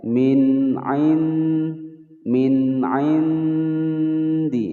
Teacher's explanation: Min indi ada nun sukun bertemu huruf dal, disamarkan kemudian didengungkan selama 2 ketukan, hukum bacaan ikhfa aqrab.